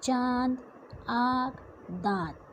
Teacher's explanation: अनुनासिक जो है इसका उच्चारण नाक और मुंह दोनों से होता है।